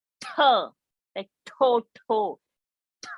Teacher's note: Mahaprana, that T, you have to aspirate out